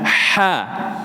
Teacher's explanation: Kalau ha itu tenggorokan tengah atas sedikit. Ha suaranya bersih mengalir persis di atas lidah.